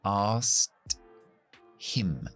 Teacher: O sea que tengo que hacer 4 consonantes sin voz, pues me cuesta hasta a mí. Así que lo que hacemos aquí es eliminamos la K totalmente y decimos asked him y posiblemente quitamos también la H